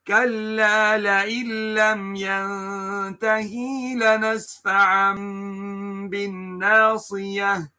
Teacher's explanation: Changing the noon sakin or tanween into a complete meme in pronunciation but not in writing, so that no trace of the sound of the noon sakina is left. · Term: iqlab